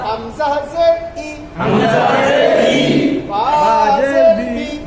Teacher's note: জেরের উচ্চারণ মারুফ হবে, অর্থাৎ বাংলার হস্যইকারের মতো মজহুল হবে না, বাংলার একারের মতো হবে না